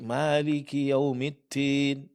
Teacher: Middin di sini keluar angin dal akan mirip dengan huruf ta. Dan ini kesalahan ya. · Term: sifat hamas